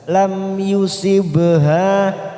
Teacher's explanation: ba sukun warna biru qalqalah sugro, kita pantulkan. Sibha, fathah diikuti alif, ha 2 harokat, kita panjangkan.